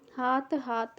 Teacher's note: हिंदी की अंतिम महाप्राण ध्वनि का यहाँ अल्प प्राणीकरण हो जाता है